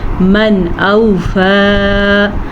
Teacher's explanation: من اوفا، نون ساکن کے بعد حمزہ آ گیا ہے تو یہاں پہ اظہار کا قاعدہ ہوگا، مطلب نون کو ہم نے ظاہر کر کے پڑھنا ہے اور بالکل غنہ نہیں کرنا